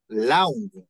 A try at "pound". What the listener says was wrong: Pound. With a P as in papa. Pound. Pound.